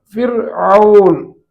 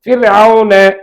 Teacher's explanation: ராவை நாம் வாய் காலியாக்கி தான் சொல்லணும். வாயை காலியாக்கி ஃபிர்அவுன என்றுதான் அதற்கு சொல்ல வேண்டும். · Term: தர்கீக்